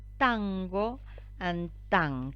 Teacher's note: it is an allophonic variant of the alveolar nasal in words like tango and tank there is assimilation of the · The velar nasal only exists in English, but it is not alien to Rioplatense Spanish speakers because it is an allophonic variant of the alveolar nasal in words like tango and tanque. There is assimilation of the velar plosive that follows the alveolar nasal, so we pronounce that allophonic variant of the alveolar nasal.